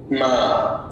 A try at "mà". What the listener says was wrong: Wonderful.